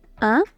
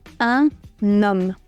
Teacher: Se dice un, pero un nom. Sin el sustantivo no pronunciamos la N, pero con el sustantivo sí. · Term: liaison